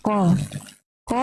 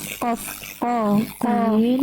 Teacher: kalau untuk Kaf dia tadi mengeluarkan nafas kalau Q Q Q itu tidak